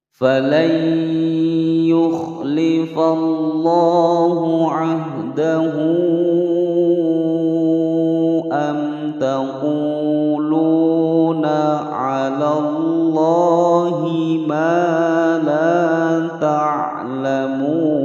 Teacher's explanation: hak yang menyandang harokat dhammah berdiri kemudian bertemu dengan huruf hamzah, maka dibaca panjang 6 harokat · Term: mad shilah tawilah